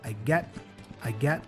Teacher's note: so the T there is a stop T he doesn't say I get but I get I get and